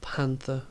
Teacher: we have the accent at the beginning so we pronounce the first part of the word we stress the first part of the word